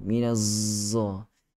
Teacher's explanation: Dia baca, dia sorokkan lidah dia belakang gigi bawah tu. Minazza. Tidak tepat.